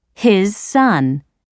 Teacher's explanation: All you need to know is that with this type of linking, you can soften the first sound and make it more like the second. So, in his son, the z in his is pronounced like the s in son.